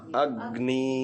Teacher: ग न में से ग को अ के साथ चिपका करके थोड़ा स्पेस देना है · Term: गुरु